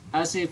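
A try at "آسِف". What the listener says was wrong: A-nya panjang saja, asif gitu. Asif A-nya panjang.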